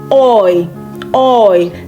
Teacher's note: when you come across E-U in a German word, it is pronounced oi. Oi. Like the same sound we have in the English word oil. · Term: diphthong